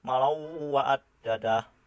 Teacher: Contohnya malau wa'ad dadah. Di sini tanwin bertemu dengan salah satu huruf idgham bigunah, yaitu waw, sehingga dibaca berdengung